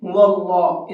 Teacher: اللہ کے لام کو پر کر کے پڑھیں گے، منہ بھر کے پڑھیں گے، هو اللہ، اس طرح سے، اس لیے کہ اللہ کے لام سے پہلے واو کے اوپر زبر ہے۔